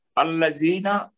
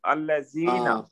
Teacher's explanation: لام کو زور دے کر پڑھیں گے اور یہ مد کی وجہ سے اس کو 2 حرکت دیں گے. الذین، ٹھیک ہے، ویری گڈ. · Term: لام مشدد